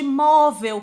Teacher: móvel, que é uma paroxítona, porque a sílaba tônica é a penúltima